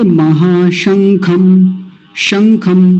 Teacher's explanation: तालव्य शकार, स नहीं बोलना